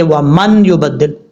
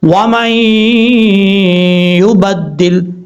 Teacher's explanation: ہجے کرتے ہوئے نون کا نام لیں گے، لیکن جب ساؤنڈ میں پڑھیں گے تو نون کی آواز ناک میں جائے گی، یعنی نون کا ساؤنڈ جو ہے وہ ناک میں جائے گا · ایک الف کی مقدار غنہ کر کے پڑھا جائے گا